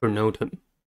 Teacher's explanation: Pronotum has three syllables and the stress is at the second one. The first syllable is pro.